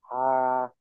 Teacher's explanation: হা গলার মধ্যখান থেকে